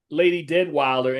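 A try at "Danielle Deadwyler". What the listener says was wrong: You keep putting an extra D in it. Wilder. It's Wilder.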